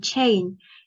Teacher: In the symbol of the sound, we can see the t and sh sound together to symbolize ch sound. It's a voiceless consonant. Our throat doesn't vibrate to the sound, and it's an affricate sound. Affricate sounds mean that the air released is relatively slower than the other sounds made, and it is a plateau sound.